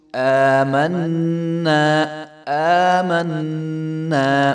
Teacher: نون کے اوپر جو ہے غنہ ہو رہا ہے اور حمزہ کے اوپر جو ہے پیچھے والے حمزہ کے اوپر کھڑا زبر ہے تو اس کو ایک الف کے برابر لمبا کریں گے، آمنا نہیں پڑھیں گے.